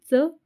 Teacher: च छ ज झ ञ या व्यंजनांना उच्चार करताना जिभेचा स्पर्श हा टाळूला होतो म्हणून त्यांना काय म्हटलं जातं तालव्य व्यंजन म्हणतात त्यामुळे च आणि